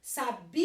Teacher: o bi é mais forte. Ele não é a última, é a penúltima, paroxítona.